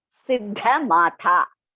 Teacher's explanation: Then Siddha Matha. The Da is, first Da is Alpaprana. The next one is Mahaprana.